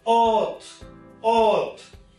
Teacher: We usually pronounce it as earth, but it is not earth. R will not be pronounced, and this R will be replaced by this long a sound